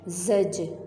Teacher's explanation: عبرۃ، زجرۃ، زا کا فتحہ زبر ہم نے جیم کے ساتھ ملایا، جیم کے اوپر جزم ہے اور جیم ہے حرف قلقلہ اس لیے ہم نے اس کو ہلایا ہے